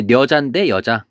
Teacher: 한자어 첫머리에서 녀, 뇨, 뉴, 니에서 니은이 탈락한다. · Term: 두음 법칙